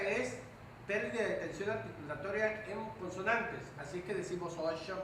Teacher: perdemos el momento oclusivo que tiene che, un momento de cierre que tiene che, como si fuera una T antes de sh, mucho, cacho.